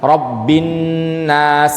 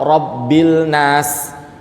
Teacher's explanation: Nun sukun ketika ada alif lam ketemu nun setelahnya, maka nunnya ditasydid, lamnya tidak dibaca. Dibaca Rabbin nas atau Rabbil nas. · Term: diidghamkan